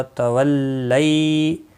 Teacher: یا لین ہے، تھوڑا نرمی کے ساتھ کھینچ کر ادا کریں گے۔ میم ساکن کے بعد دوسرا میم آیا ہے، ادغام شفوی ہوگا۔